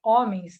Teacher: o E e o N se encontram formando um som nasal.